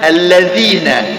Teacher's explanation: dzal dari ujung lidah sama ujung gigi seri atas